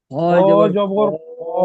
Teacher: মুখটি গোল করে আওয়াজটি মোটা হবে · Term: পুর